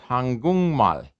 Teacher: what happens is the k changes to an ng · a one of these stops follows is followed by a nasal the stop turns into a nasal so korean becomes hangung mal